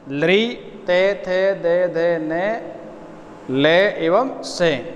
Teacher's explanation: इन 8 वर्णों का उच्चारण दंता यानी दांतों की सहायता से होता है